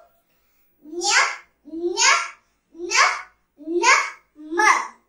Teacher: ಪ್ರತಿ ವರ್ಗದ ಕೊನೆಯ ಅಕ್ಷರಗಳನ್ನು ಮೂಗಿನ ಸಹಾಯದಿಂದ ಉಚ್ಚರಿಸಲಾಗುವ ಅಕ್ಷರಗಳಿಗೆ ಅನುನಾಸಿಕಾಕ್ಷರಗಳು